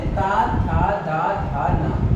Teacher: जब भी आप इन्हें बोलते हैं तो आप ये देखिएगा दंत का प्रयोग होता है।